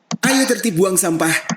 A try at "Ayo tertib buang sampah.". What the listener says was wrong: Oh, ayo. Ayo juga sih, cuman intonasinya beda ya. Bukan ayo, bukan gitu, tapi ayo. Singkat saja.